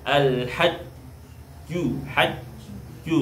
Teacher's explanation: alhaju jimnya tasdid jimnya masuk ke syidah ya kuat alhajju Haju maka seperti ditahan karena ada sifat syidah alhajju jahar dan syidah ya jahar dan syid alhajju ya kita